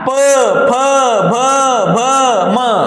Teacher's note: त्यांचा उच्चार करत असताना आपले ओठाला ओठ लागल्याशिवाय उच्चार होत नाही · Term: ओष्ठे